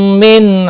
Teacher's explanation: میم ساکن کے بعد دوسرا میم آیا ہے، ادغام شفوی ہوگا، گناہ کے ساتھ پڑھیں گے